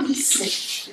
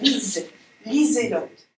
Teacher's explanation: j'insiste sur l'opposition sourd-sonore S et Z